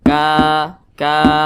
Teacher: atas nah atau memiliki harakat fathah maka huruf Kaf dibaca panjang Mad Thobi'i panjangnya dua harakat atau kira-kira dua ketukan